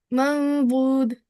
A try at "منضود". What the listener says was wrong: Uh, shouldn't be the sound. There was a the sound in yours. Mandud.